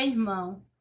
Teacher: na palavra irmão a sílaba tônica é mão